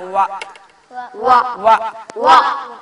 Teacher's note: വാവ് പറയേണ്ടതോ വ രണ്ട് ചുണ്ടുകളെ കൊണ്ട് മാത്രമാണ്.